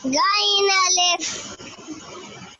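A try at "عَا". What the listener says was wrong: मिकदार वाले हुरूफ है ना, आप खींच नहीं रहे हो। आइन अलिफ।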